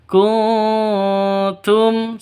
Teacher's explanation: Kuntum non mati bertemu dengan ta, samar. Cara bacanya samar, didengungkan, siap-siap ke huruf taknya. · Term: ikhfa hakiki